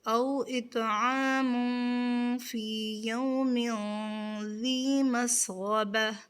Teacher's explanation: غین کو اس کے مخرج سے ادا کرتے ہوئے پر کریں گے